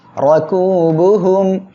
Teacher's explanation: এখানে র অক্ষরের উপরে জবর আসছে বলে আমরা মোটা করে পড়বো